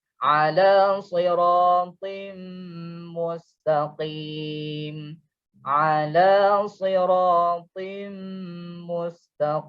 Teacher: Kalau kita lepas jadi out, so dia tertahan. And then dia ada juga sifat isti'la yang mana lidah terangkat, dan juga itba' yang mana lidah melekat ke langit. Dan sifat spesial untuk dia adalah sifat qalqalah, ada lantunan yang mana kita bunyi out to, lantunan secara automatik yang to tu.